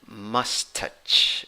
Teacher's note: The stressed syllable is the first syllable. You have a schwa there in the first syllable. In the second syllable, you have a long A.